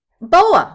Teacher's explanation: it is an open syllable that has collapsed into a schwa